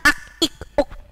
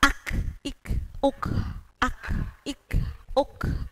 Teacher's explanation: kalau huruf ka itu masuk pada hamas, jadi harus ada aliran udara yang keluar.